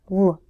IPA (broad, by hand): l